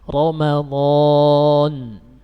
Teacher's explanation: dibaca tafkhim atau tebal ya kalau bahasa orang-orang, yaitu apabila huruf ra berharokat fathah. Contohnya Ramadan, ra ditafkhim, Ramadan.